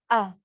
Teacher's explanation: Jadi hamzah yang keluar dari bagian pangkal tenggorokan.